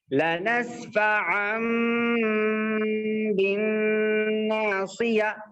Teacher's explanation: با آنے کی وجہ سے یہاں پر نون بالکل سائلنٹ ہو جائے گا، اور نون کی آواز جو تنوین کے اندر بھی آتی ہے وہ بھی بالکل سائلنٹ ہو جائے گی، اور اس کو بدل کے میم سے بدل کے پڑھیں گے. · اب دیکھیے یہاں پر عین میم، عین دو زبر تو ان ہوتا، لیکن ان نہیں پڑھیں گے، بلکہ عین میم دو زبر عم پڑھیں گے